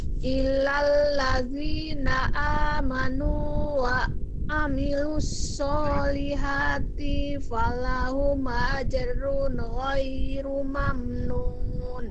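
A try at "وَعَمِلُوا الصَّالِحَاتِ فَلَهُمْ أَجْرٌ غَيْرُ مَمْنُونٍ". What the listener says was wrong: Solihatinya jangan dibaca panjang. Wa amilus solihati fa tifa, langsung tifa. Jangan tifa ya, langsung tifa. Jangan ti-nya jadi jangan i-nya jangan dua tetapi satu. Tifa, jadi tifa, jangan tifa.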